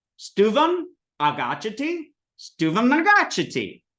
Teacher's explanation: when you have a double na like that, you just like say the na a little longer